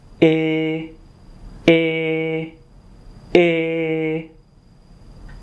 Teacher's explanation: Il faut presque fermer la bouche. Il faut tirer les lèvres. La langue touche les dents du bas. C'est un son antérieur. Le son vient du devant de la bouche. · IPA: [e]